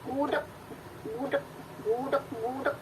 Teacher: bunyi G akan berubah menjadi bunyi K tak plosif manakala ia berada pada posisi koda